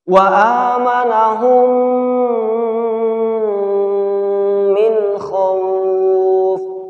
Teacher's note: Mim sukun bertemu dengan huruf mim. Maka cara membacanya adalah dengan merapatkan kedua bibir dan ditahan 2 harokat disertai dengan dengung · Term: idgham mimi